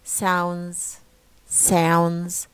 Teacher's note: No D in the middle one no D in the transcription